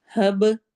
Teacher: ربنا، رو کو موٹا پڑھنا ہے، نا میں 2 حرکہ، 2 کاؤنٹ ہم اس کو لمبا کریں گے۔ ہب میں با پہ قلقلہ ہوگا۔